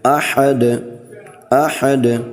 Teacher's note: احد اصل لفظ تو یہ احد، تو یہاں پر ہم وقف کریں گے، وقف کی صورت میں ہم نے دال کو ساکن کر دینا ہے